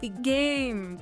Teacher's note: The G might be unreleased before the next G